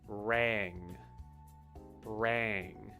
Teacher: So the A sound is more of that flat, open A sound rather than ah. It's ah. It's back deeper in your throat.